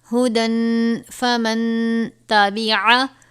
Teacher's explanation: ہدن میں تنوین کے بعد پھر حرف اخفا میں سے فا تھا تو اخفا کا قاعدہ لگے گا